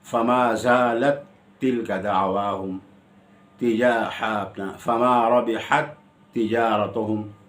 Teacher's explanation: الف با تا مثلین میں مدغم اور مدغم فی دونوں ہیں، جیسے فما زالت تلک دعواہم فما ربحت تجارتہم، تا کا ادغام تا میں ہو رہا ہے تو مدغم بھی ہے اور مدغم فی بھی ہے